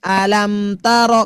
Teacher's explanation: ketika ibu mengucapkan sudah menutup mulut alam itu sudah mendengung namanya juga izhar. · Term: izhar syafawi